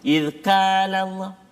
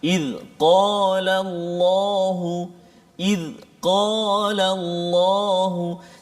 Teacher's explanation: kaf di depan, qaf belakang dia. Qaf ni dia dekat dengan anak tekak.